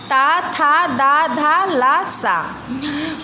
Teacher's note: इन व्यंजनों का उच्चारण ऊपर के दांतों पर जीभ से लगने से होता है।